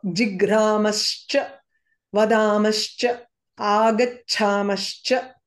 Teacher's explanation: So usually visarga becomes sa and then this sa transforms into sha. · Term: shakara